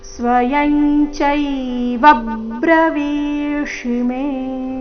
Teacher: ಬ್ರ ಸಂಯುಕ್ತಾಕ್ಷರದೊಂದಿಗೆ ಪ್ರಾರಂಭ ಆಗ್ತಾ ಇದೆ, ಅದಕ್ಕಾಗಿ ಚೈವ ಬ್ರವೀಷಿ. ಬ್ರವೀಷಿ ಶಬ್ದದಲ್ಲಿ ವಿ ದೀರ್ಘ, ಶಿ ರಸ್ವ ಬರಬೇಕು.